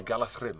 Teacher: a DH consonant sound gets a th pronunciation